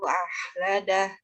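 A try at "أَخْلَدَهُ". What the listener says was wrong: Di huruf kho-nya ini tadi seperti tertahan huruf kho-nya. Jadi dikeluarkan makhrajnya akhladah. Akhladah. Nah, ini jadi huruf kho ini tidak tertahan, sifatnya mengalir, rokhwah dan juga hamas gitu. Tidak ditahan huruf kho-nya. Akhladah.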